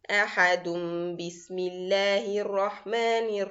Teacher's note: So we are going to change the tanween sound to the meme sound. Because of that we write a meme at the top of the letter. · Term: iqlab